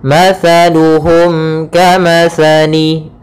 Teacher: izhar syafawi, yaitu suara mimnya harus jelas dan tidak boleh ditahan.